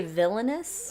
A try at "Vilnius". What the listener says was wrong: I see, but I heard like villainous, like